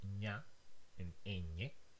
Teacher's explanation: Spanish has a palatal nasal, ña, and ñe. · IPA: ɲ